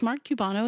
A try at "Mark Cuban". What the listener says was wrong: It's just Cuban. I don't know why you called him Cubano.